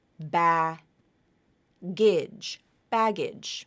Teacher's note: your next syllable is AG bag AG but that bag G that final g sound moves over to the beginning of the next syllable